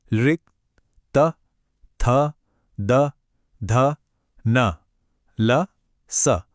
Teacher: जीभ की जो टिप है, वह सीधे ऊपर वाले दांतों के पीछे टच होती है।